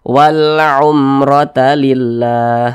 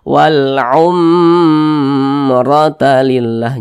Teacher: berarti ini izhar syafawi di izhar syafawi karena dia izhar maka dibaca jelas tidak berdengung jadi jangan dipanjangkan baca pendek saja walumrata lillah nah dibaca seperti itu jangan dibaca seperti ini walumr